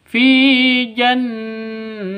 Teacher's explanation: Fi panjang dua ketukan. Karena ada ya mati diawali dengan kasrah. Ya mati sebelumnya berharakat kasrah. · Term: Mad thobi'i